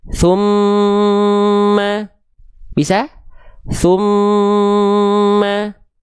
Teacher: amnya ditahan 2 harokat, baru masuk ke vokal A-nya.